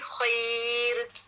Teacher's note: جب را سکون ہو اور اس سے پہلے یائے لین آ جائے تو وہاں پہ را باریک ہوگا. آپ مثال کو دیکھیں یہاں خیر، یہاں رو نہیں پڑھا جائے گا بلکہ باریک پڑھیں گے خیر ر باریک. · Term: ترقیق